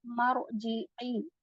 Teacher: پھر ارجعی آگے بڑھیں گے تو آپ میم کو ملا رہے ہیں رو سے، اور جب آپ میم کو رو سے ملائیں گے تو مرجعی آواز آئے گی، اور یہاں پر آپ رو کو ہیوی پڑھیں گے